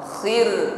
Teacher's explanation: Getaran pada ra di sini tertib diringankan karena sebelum ra ada harakat kasrah.